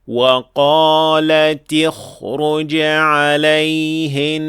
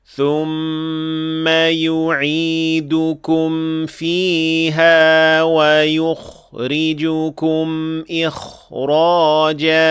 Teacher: we will still apply regular tafkhim, not relative tafkhim, because kha in each of these cases is followed by a heavy ra. And so, kha will regain its full regular tafkhim.